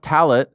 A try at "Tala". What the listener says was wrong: Tala. No, the T is silent at the end of that. It's just Tala. Tala.